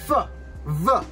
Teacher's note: Our next box sharing couple is going to be our labiodental fricatives, F and V